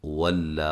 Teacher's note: واو کو ادا کرتے ہوئے ہونٹوں کو گول کرنا ہے، واو کو لام سے سختی سے ملانا ہے، اور جب وقف کریں گے تو ایک الف کی مقدار کے برابر اس کو لمبا کرنا ہے، جو کہ اس کی اصلی مقدار ہے۔